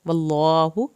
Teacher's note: اللہ کے نام کو پر کریں گے یہاں پہ